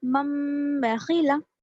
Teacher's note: अब नून की आवाज नहीं आएगी यहाँ पर, सिर्फ मीम की आवाज आएगी। इसको हम इख्फा के साथ और गुन्ना के साथ नाक में ले जाकर आवाज को गुन्ना करते हुए पढ़ेंगे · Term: इक़लाब